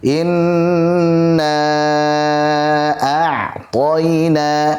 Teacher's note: Jadi jangan sampai i-nya dipanjangkan. Jangan sampai seperti itu. Tetapi langsung masuk inna, kemudian nun tasydid selalu kita panjangkan gunanya.